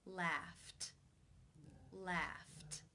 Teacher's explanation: The final sound in the infinitive is f, the unvoiced F sound. Since it's unvoiced, it is case 1, where the ed is pronounced as the T sound.